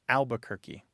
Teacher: That first R just poofs goes away. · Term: dissimilation